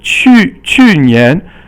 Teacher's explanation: 去 年 is fourth tone, and Nian is second tone.